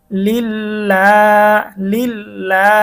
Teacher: এই জন্য আমরা এখানে টান দিব লিল্লা, লিল্লা। এবং আল্লাহ শব্দের লামটাকে আমরা একটু চিকন করব